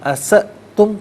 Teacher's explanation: اسأتم میں حمزہ ساکن ہے تو جھٹکے کے ساتھ پڑھا جائے گا، تو اسے اساتم نہیں اسأتم پڑھیں گے.